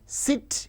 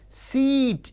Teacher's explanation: sit, in which E is short, whereas seat, in which E is long